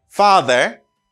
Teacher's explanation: Pour Américain, vous prononcez comme far. Vous prononcez R là.